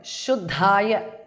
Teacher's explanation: Shuddhaya, second dha is Mahapranah.